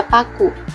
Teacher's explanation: Fonem P di awal dilepas dengan jelas.